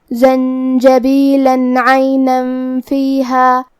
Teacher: اگر ہم یہ آیت کو اگلی آیت کے ساتھ ملا کے پڑھیں تو حرف العین کلمت عینن میں دوسری والی آیت میں حروف الاظہار میں سے ہے اور اظہار کا معنی ہے ظاہر کرنا اور تنوین کی اصلیت نون ساکن ہے، تو ہمیں یہاں تنوین ظاہر کرنا ہے اور ہم اسے نون ساکن پڑھیں گے اور بغیر غنہ سے یہ حکم کو ادا کریں گے · جیم بھی حروف الاخفاء میں سے ہے تو ہمیں نون کو چھپاتے ہوئے اور غنہ کے ساتھ یہ حکم کو ادا کرنا ہے